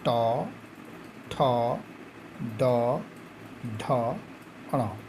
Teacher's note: इसमें ट, ठ, ड, ढ, ण, क्योंकि इन वर्गों में इस वर्ग में जीभ मुड़ जाती है, इसलिए इसे मूर्धन्य कहा जाता है